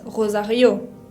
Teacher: la acentuación, el acento tónico, va sobre la última vocal. No pronuncio Rosario, sino que pronuncio Rosario, con esa R de la garganta.